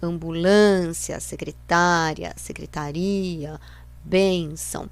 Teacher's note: essas são palavras paroxítonas que tem a penúltima sílaba forte